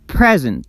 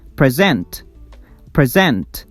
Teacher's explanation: the noun has its word stress on the first syllable, and the verb, the stress, falls on the second syllable